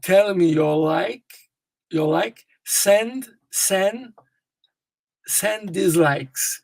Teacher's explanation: Fica o S do likes, ele gruda no end. Só que aí você emite o D.